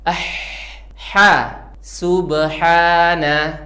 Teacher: pakai ha kecil yang keluar dari tengah tenggorokan